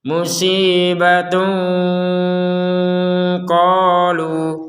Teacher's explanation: karena kita berhenti di kata qalu, maka panjang dari lu itu 2 harokat.